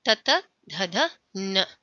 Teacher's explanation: with the help of our tongue and with the help of the teeth only the sound creates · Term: दंत्य